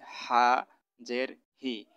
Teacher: হাটা গলার ভিতরে চাপাই হবে।